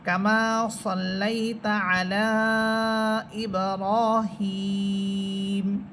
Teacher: আমরা যখন মিম হরফে গিয়ে থামতেছি তখন সেই এক আলিফটাই তিন আলিফ হয়ে যাবে এবং মিম হরফ সাকিন হবে